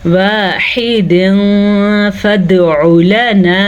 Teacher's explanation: دال پہ کلکلا ہو رہا ہے کیونکہ دال قطب جد حروف کلکلا کے 4 حروف میں شامل ہے،